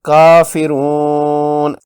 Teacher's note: اس کے بعد مفتوح نون ہے، یعنی نون زبر والا ہے، وقف کرنے پر نون ساکن میں بدل جائے گا اور اس واو مدہ پر مد کریں گے 6 حرکات لمبی، یہ مد عارض ہوگی۔